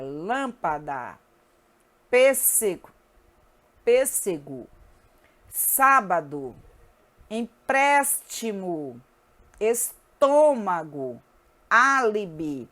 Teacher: É uma palavra cuja sílaba tônica é a antepenúltima. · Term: proparoxítona